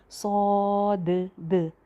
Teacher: तो इसी तरह इसको मोटा करके और भरा हुआ मुंह करके सौद। और लास्ट पे जो दाल की आवाज़ आ रही है वो बाउंसी साउंड होनी चाहिए